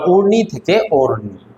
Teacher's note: উ আছে উটা ওয়ে রূপান্তরিত হয়েছে স্বরসঙ্গতিটা।